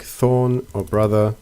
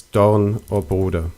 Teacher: German replaced the TH sound with a D sound.